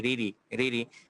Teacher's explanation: যখনই জের থাকবে তখন রটা পাতলা হবে, বাংলা র এর মতো অনেকটা।